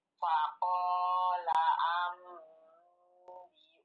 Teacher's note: Nah, Ibu, iqlabnya kurang gunnah. 2 harokat.